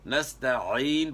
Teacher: عین کی آواز گلے کے درمیان سے نکالنی ہے